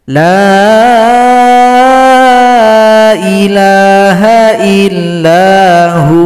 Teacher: waw disukunkan, ha menjadi mad waw, panjang 2 ketukan